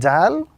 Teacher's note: The tip of the tongue touching the base of the upper two front teeth gives us the sound of the letter Dal, which possibly can be the equivalent to the letter D in the English language.